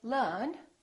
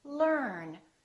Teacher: So the American R is never silent. It's not silent at the end of the word and also before another consonant.